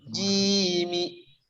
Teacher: bunyi ji itu ada di tengah-tengah lidah nempel ke langit-langit. Ji panjang.